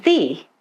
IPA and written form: ðiː (the)